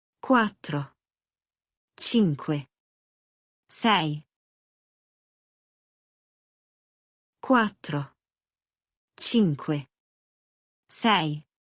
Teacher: Cinque has that soft c from lesson two — c before an i is a CH sound.